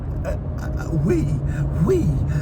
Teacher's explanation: this very breathy emotional um tone